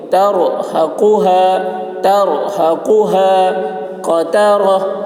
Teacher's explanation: ہا کی آواز بھاری ہوگی، قاف کی آواز موٹی ہوگی